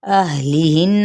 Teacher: ہا کو اقصی حلق سے ادا کریں گے